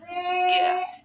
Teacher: You can really feel the closure, and it's happening right here at the back, where the back of the tongue touches the soft palate and velum